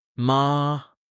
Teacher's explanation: Short, low, with a stop. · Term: heavy tone